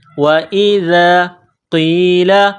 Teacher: وَإِذَا قِيلَ، واو کو پڑھتے وقت ہونٹوں کو گول کرنا ہے. وَإِذَا، ذال کو نرم کرنا ہے، زبان باہر نکالنا ہے